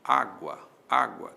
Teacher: Há uma subidinha do U para o A. Esse U é semivogal, o A é vogal. Aí nós temos um ditongo. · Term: Ditongo crescente